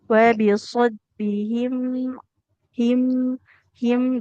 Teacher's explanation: jadi terasa dulu aliran suara pada huruf mimnya